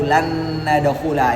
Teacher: ini mudah enggak bisa dihilangkan dengungnya Mengapa karena Nun punya dengung Nun yang berikutnya juga punya dengung e maka sempurna dengungnya karena s-sama punya sifat dengung lanadulaha kemudian